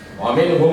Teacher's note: Cara bacanya itu ada semacam dengungan ya. Wa minhum ditahan gitu ya, bibirnya nempel, bibir atas bibir bawah. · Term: idghamimi